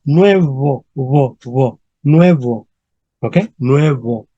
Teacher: En español es la palabra nuevo y se pronuncia con un diptongo, nue y una fricativa, wo, ¿ok? Nuevo, ¿ok?